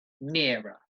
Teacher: and then you've got the rough sound at the end mirror stress on the first syllable